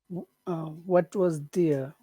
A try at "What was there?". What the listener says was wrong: make what a little bit bigger. What was there?